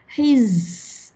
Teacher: Memang huruf safir 3. Safir ni bunyi berdesir. Orang putih kata buzzing.